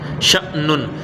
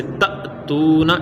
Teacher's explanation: حمزہ ساکنہ کو ہمیشہ جھٹکا دے کے پڑھتے ہیں